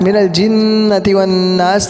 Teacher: دونوں جگہ گنہ کریں گے اور آخر میں سین کو صحیح سے ادا کریں گے